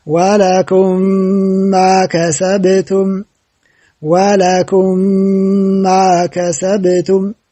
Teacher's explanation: ከቀጣዩ ሚም ጋር ጨፈለቅናት ካፍንጫችንም ድምጽ አወጣን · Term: ኢድጋም ሙተማሲለይን